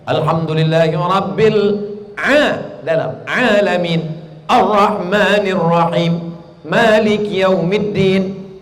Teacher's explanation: Bunyi 'R' itu tebal, tafkhim.